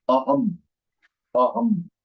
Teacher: So in Sanskritam, the anuswar is pronounced as ma and not na.